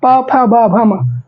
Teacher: आपके होठ क्या हो रहे हैं आपस में टच होते हैं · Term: ओष्ठ